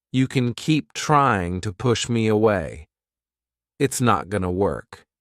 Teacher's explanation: As you can see, to is substituted with the schwa sound yet again, and the long O and ing are replaced with a short O sound, gonna.